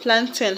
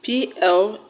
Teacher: The word plantain has its stress on plan.